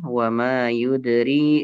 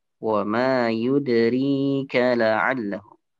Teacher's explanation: ri-nya panjang 2 harakat